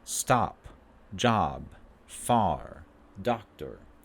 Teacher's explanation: This is a low central tense vowel. So we lower our jaw and our tongue. Mouth goes down.